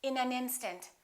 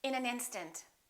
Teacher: first sentence in an instant we wouldn't say in an instant we would connect the final consonant to the next vowel so this and in this a would be said together listen